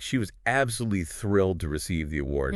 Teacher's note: where the emphasis naturally falls, perhaps on absolutely and thrilled